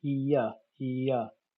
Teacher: Ear starts at the E position and ends at the schwa position